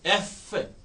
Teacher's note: एफ lower lips और अपर teeth, एफ, उससे रोकी और फिर निकाली।